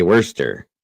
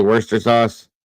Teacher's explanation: be broken down but the Brits say Worster wur s yeah they leave off the Shire so they just say Worster sauce